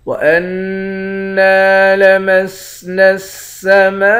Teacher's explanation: میم کے بعد الف ہے، اس الف پر مد ہے، اس مد کو 5 الف کے مقدار کھینچ کر پڑھتے ہیں۔